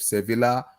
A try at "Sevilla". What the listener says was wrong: It's Sevilla. The L is silent. The L is silent. Sevilla. It's Sevilla. The L is silent, man. Sevilla. Just look at it. Look at it as Sevilla. Sevilla.